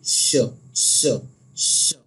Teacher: जबान का दरमियानी हिस्सा और तालू का दरमियानी हिस्सा इससे अदा होता है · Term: शीन